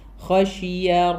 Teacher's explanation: ഷീൻ തഫഷീന്റെ ആ sound spreading sound വരണം